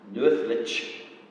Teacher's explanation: the lich there is not stressed, because it is the second element in that compound word